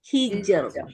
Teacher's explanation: lidahnya rileks karena harakat sebelumnya di sini kasrah fialika qamul hijr hijr lebih rileks. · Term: tipis